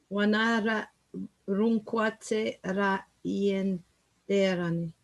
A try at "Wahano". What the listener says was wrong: No, what you're doing at the beginning, you're saying Wanardo. No, it's Wahano. Wahano.